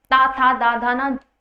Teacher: जो आपकी जीभ है वो दांत को स्पर्श करती है